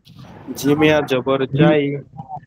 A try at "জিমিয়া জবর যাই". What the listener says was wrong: কোনো টান হবে না জিমিয়া জবর যাই